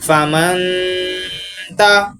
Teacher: جیسے کہ یہاں پر فا زبر فا، میم نون زبر من، فمن، تا زبر تا۔ اب نون ساکن کے بعد حروف اخفاء میں سے تا رہا ہے تو ادھر غنہ کریں گے